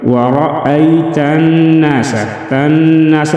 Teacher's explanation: نون مشدد میں غنہ کریں گے، ناس 1 الف کے برابر کھینچ کر پڑھیں گے۔